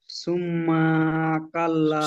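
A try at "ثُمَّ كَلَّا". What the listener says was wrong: সুম্মা টান হবে না, সুম্মা কাল্লা। গুন্না করুন কিন্তু টানবেন না।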